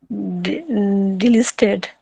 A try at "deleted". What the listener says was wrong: there's no L in there. So if you break the word down into small parts, so I'll show you what I mean. So if you break it down into small parts like that, so debt.